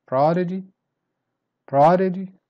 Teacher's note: Prodigy, start strong, then you go down